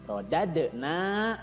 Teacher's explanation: Tsumma radadna, ya, rodade, ya, di situ juga sama qalqalah sugro, jadi harus dipantulkan. Rodadna, na-nya mad tobi'i, panjangnya 2 harokat, dibaca panjang